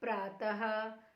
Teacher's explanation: विसर्ग का उच्चारण अह के रूप में होता है।